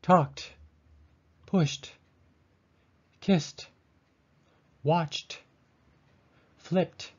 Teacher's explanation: we unvoice the d at the ends of these words · the d at the end of each of these words is pronounced like a t isn't it another way of saying it is that we unvoice